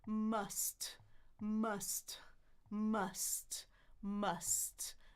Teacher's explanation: It's m, m. My tongue is in the middle for that umbrella sound. My two lips are closed, so my tongue is already in the middle, waiting, right?